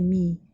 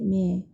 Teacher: Mim berbaris bawah, kita sebut je mi, jangan singit me, kita kena sebut mi.